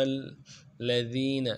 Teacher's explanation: اور دین میں یائے مدہ ہے، ایک الف دار میں کھینچیں گے · حمزہ کو میم کے ساتھ ملانا ہے، میم کے اوپر تشدید ہے، زور دیں گے۔ اور میم کو اگلے لام کے ساتھ ملانا ہے۔